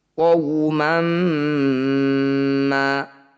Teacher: Litunzira qauman, waw sukun didahului fathah, qaw disebut bacaan madlin atau madlayin. Bunyi waw sukunnya baca dengan lembut atau lunak